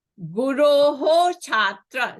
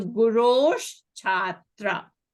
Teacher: the Visarga, it is followed by a hard consonant cha. So the Visarga becomes a sh. Remember? Cha, cha, Visarga becomes a sh.